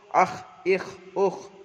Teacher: খয়ের মাখরাজ জিবের কণ্ঠনালীর শেষ ভাগে হতে উচ্চারিত হয় খ